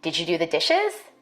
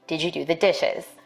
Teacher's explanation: In a study, I found that African American speakers may be more likely to ask a yes-no question with a level tone or a falling tone. For white speakers, we expect a rising tone in questions like these.